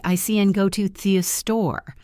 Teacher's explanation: The only big words are go and store.